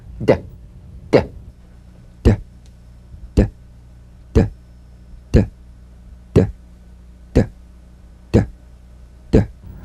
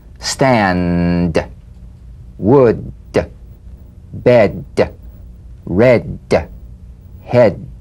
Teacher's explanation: Voiced tongue front palatal stop consonant. Play this D drum beat on the springing away of the tongue from the upper gum ridge. Feel a pulsation in the tongue. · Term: drum beat D